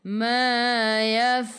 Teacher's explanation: Boleh baca 2, 4 atau 6 harakat. Matikan dengan huruf nun, hujung lidah menyentuh gusi atas